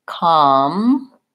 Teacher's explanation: in comparable, the first syllable is stressed, and then the erable are all short and unstressed. And so instead of the compare, the the schwa vowel from the unstressed compare, we have an ah in this one.